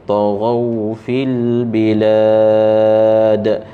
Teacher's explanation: Di situ ada qalqalah, ya, bilad, lam tu bilad panjang, ada qalqalah pada huruf dal itu